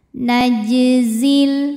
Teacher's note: Jimnya tetap mantul aja dibaca jelas.